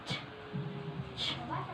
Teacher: The sound is produced by raising the tip of your tongue against the upper teeth ridge and the hard palate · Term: affricate sound